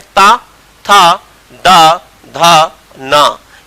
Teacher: यह वह ध्वनियां हैं जिसमें जीभ और वायु का स्पर्श सीधा दांतों से होता है, इसीलिए इनको बोलते हैं दंत ध्वनि